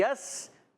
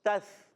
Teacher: سین سیٹی سے، ثا بغیر سیٹی کے